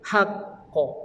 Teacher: Dia huruf qaf ni huruf isti'la tebal.